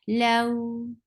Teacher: 2 counts long, and it should be very soft. When you say, it should be soft. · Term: Waaw Leen